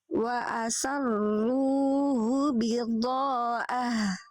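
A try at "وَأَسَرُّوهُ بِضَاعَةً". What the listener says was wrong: Ainnya kurang duduk. Wa asarruhu bidha'ah.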